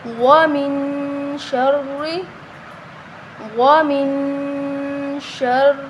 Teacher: را کو موٹا نہیں کریں گے، ومن، اور نہ لمبا کریں گے کیونکہ حرکت ہے، ٹھیک ہے؟ را کے نیچے زیر ہے، حرکت ہے تو اس کو لمبا نہیں کریں گے۔